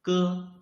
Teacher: you can clearly feel that the root of your tongue is blocking the airflow